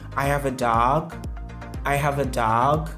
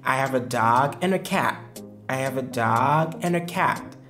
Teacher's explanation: Exemple, si je cause avec un ami et qu'on parle de plusieurs choses et puis je lui dis « I have a dog, I have a dog », il s'attend à ce que je continue toujours de parler car mon intonation monte. Ça sous-entend que je n'ai pas encore fini de parler. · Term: rising intonation